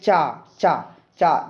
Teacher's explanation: जैसे आप लोग बोलेंगे चा, चा, चा, जो आपकी जीभ है आपके ऊपर तालु को स्पर्श कर रही है